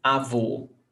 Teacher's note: Acento circunflexo. It makes a closed vowel sound.